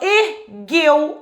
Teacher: Olha só como é que o E é mais forte que o U.